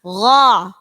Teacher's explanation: Gho, di tenggorokan. Kalau go itu keluarnya di lisan, tidak di tenggorokan.